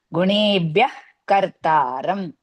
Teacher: So to remove the visarga, we have, whenever ka comes after the visarga, we have to use half ha